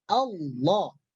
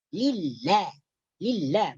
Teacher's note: Jadi huruf lam itu adalah daripada tepi hujung lidah menyentuh gusi atas, langit-langit atas.